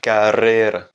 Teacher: on va plus accentuer un double R. Il va être un peu plus long, un peu plus roulé que le R simple qui vient juste après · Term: R roulé espagnol